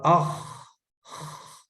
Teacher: آواز بھی جاری ہے، سانس بھی جاری ہے